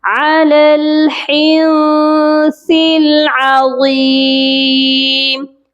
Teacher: عین کی آواز حلق سے آئے گی اور غا کو موٹا کر کے پڑھیں گے